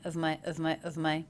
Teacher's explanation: so I'm using the schwa here and I am giving the V sound